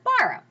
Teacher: trochaic, and it's the name of the meter that goes up and then down, as in the word borrow.